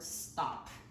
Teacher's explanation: T sounds tough and to kind of convey the sounds the is like an English T sound but it's voiceless and not aspirated so think of the word stop the hour start it's that